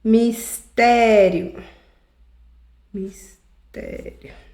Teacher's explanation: E aí é a penúltima sílaba tônica, né? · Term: paroxítonas